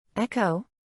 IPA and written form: ˈɛk.oʊ (Echo)